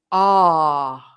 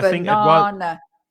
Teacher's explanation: the syllable in the middle is the strong vowel, and it's a long vowel.